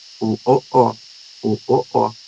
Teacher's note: Na parte direita, posterior, nós temos, estão as vogais feitas com a língua mais para trás, perto da garganta